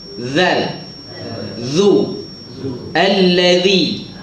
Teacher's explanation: Wa a'udzu bika. Zal yang betul di mana zal? Hujung lidah di hujung gigi atas.